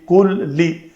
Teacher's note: تو کلی لام کا لام کے اندر ادغام ہوا